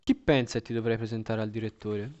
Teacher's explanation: you can hear that the nuclear pitch accent is on V1